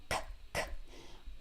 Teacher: S is an unvoiced sound. S, there's no vocal cords, it's just air.